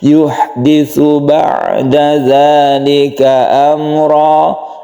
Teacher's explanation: Yuhditsu, ada sa yang tipis, ha yang harus bersih.